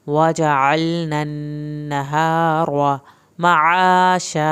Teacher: अलनन नून की शद आ गई है, एक अलिफ के बराबर देर लगेगी। नहार हा को अंदर से पढ़ना है, रो को पुर करके पढ़ना है। वजअलनन नहार मआशा।